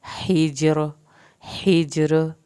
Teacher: हा को हल्क से पढ़ना है, जिम का कलकला होगा और रा पतला पढ़ा जाएगा।